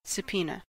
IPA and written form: səˈpiːnə (subpoena)